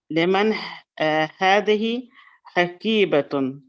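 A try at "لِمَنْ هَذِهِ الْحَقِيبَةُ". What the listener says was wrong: حكيبة, not tun, to. You're reading with a tanween, without a tanween. حكيبة to, with just a dhamma. To.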